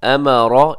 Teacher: अमरा इसमें रा मोटा है